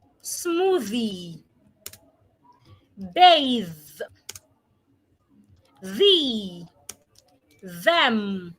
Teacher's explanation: Now, how do we articulate the voiced th? Put your tongue in between your teeth and make vibration. Let your throat let your vocal cord vibrate.